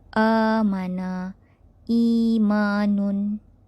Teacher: mad badal wajib dibaca dengan kadar harakat panjang 2 harakat